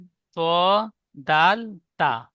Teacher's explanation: 11 number মাখরাজ জীবের আগা এবং সামনের উপরের দুই দাঁতের গোড়ার সাথে লাগিয়ে উচ্চারিত হয়